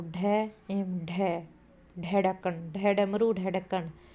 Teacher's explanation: व्यंजन का उच्चारण जीभ की नोक से उलट कर कठोर तालु को झटके के साथ कुछ दूर तक छूकर किया जाता है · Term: उत्क्षिप्त व्यंजन